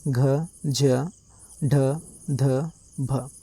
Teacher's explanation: महाप्राण मतलब ज्यादा हवा। हवा का प्रक्षेपण अधिक हो साथ ही मुंह से हकार की ध्वनि निकले महाप्राण वर्ण कहलाते हैं।